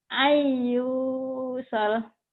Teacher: N-nya hilang, masuk ke Y. Ayu ditahan dan gunahnya ada dengung. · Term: idgham bi gunah